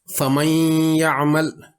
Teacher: نون ساکن کے بعد یا آ گیا اور جب اس کا ادغام کیا تو نون کی کچھ آواز باقی رہی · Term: ادغام ناقص